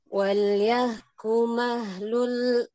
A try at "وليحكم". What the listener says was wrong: وليحكم. طيب، حرف الحاء. نعم، حرف الحاء وليس الهاء.